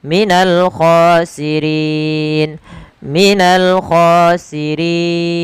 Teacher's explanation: Maaf ketika bacaan itu wakaf maka bacaan akhirnya atau huruf akhirnya dimatikan menjadi khosirin. Nah sebelum huruf yang dimatikan itu ada huruf mad. Maka inilah kita namakan dengan mad arid di sukun. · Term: mad arid lisukun